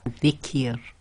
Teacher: So simplified rule for that is whenever the ra carries a kasra and it's going to be pronounced, or the last sound before the ra, when the ra is behaving as sakin or is actually sakin, is a kasra, then it's going to be tarqiq, i.e. light or empty mouth, said with a nice big smile